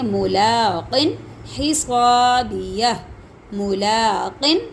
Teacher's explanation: غنہ نہیں کریں گے، ظاہر کر کے پڑھیں گے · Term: اظہار